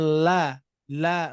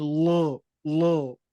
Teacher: menyimpang dari posisi lam tipis menjadi tebal yang asalnya la la menjadi lo lo gitu ya Nah untuk